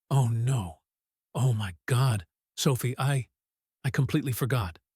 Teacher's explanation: His voice loses its volume. It becomes breathy. He stammers.